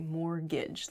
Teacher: mortgage has a t in it but we don't say the T it sounds like mortgage like there's no T at all